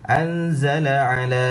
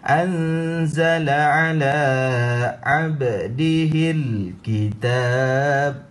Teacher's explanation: Ala dibaca dengan panjang 2 harakat. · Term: mad asli